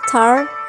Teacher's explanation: Tar is produced with a puff of air called aspiration. This aspiration is represented as th.